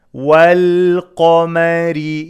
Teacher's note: قاف is heavy ميم and را are light